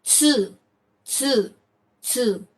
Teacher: the third pronunciation is not tu but tsu. Between T and S, tsu.